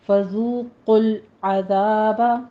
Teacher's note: قوف کو پر پڑھتے ہوئے لام کے ساتھ ٹچ کرنا ہے، تو لام کو قلقلہ نہیں کرنا · فذوقل میں ذال کو نرمی سے پڑھتے ہوئے آگے واو مدہ ہے، ہونٹ گول کر لیجئے، 2 کاؤنٹ کرنا ہے